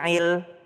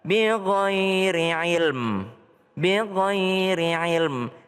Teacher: Kalau berhenti di ilm ilm jangan hilang mimnya. Jangan bighhairi il enggak tapi ada mimnya di belakang.